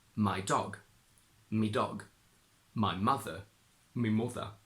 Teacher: the possessive adjective of the first person singular My is pronounced as me, which is fairly common in other northern accents too.